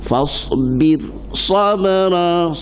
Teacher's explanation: sabr tu qalqalah sughra, cepat mendetaknya